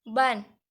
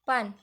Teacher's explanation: Saat mengucapkan ban terasa ada getaran di tenggorokan, tetapi pada pan tidak ada. Dari sini terlihat bahwa perbedaan kecil dalam getaran pita suara sangat berpengaruh pada makna bunyi.